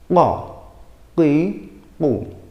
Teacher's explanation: Cara pengucapan huruf qaf itu dengan mempertemukan lidah bagian belakang dengan langit-langit yang bagian belakang juga. Nunjuknya agak susah, bagian belakang.